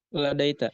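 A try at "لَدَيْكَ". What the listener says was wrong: Ladaika. Ladaika pakai domir kaf.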